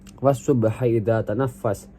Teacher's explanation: as-subhi dibaca idgham syamsiyah karena lamnya diidghamkan ke huruf shad karena huruf syamsiyah.